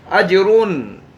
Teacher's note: अजरुन जीम पर कलकला करेंगे।